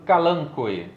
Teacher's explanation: esse OE é uma daquelas exceções onde eles são pronunciados de modo separado. Ou seja, é um hiato.